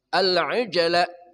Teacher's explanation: jimnya qalqalah sughra memantul dengan kuat